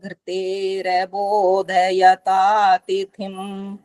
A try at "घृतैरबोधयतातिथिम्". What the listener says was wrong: अब जो घृतैर बोलना था ना, घृतय आई, फिर ऐसे कर दिया, वहां भी डबल टाइप हो गया, वो गलत हो गया।